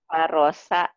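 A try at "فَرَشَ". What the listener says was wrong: Shinnya kurang keluar.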